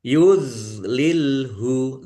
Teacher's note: dok sukun bukan kolkolah, jangan dipantulkan.